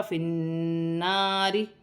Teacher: را باریک پڑھی جائے گی، را کے نیچے زیر کی حرکت ہے